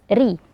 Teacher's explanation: Ro dengan kasrah dibaca tipis.